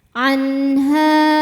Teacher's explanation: izhar ya izhar halq jelas atau terang bunyi nunnya jangan ditahan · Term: izhar halqi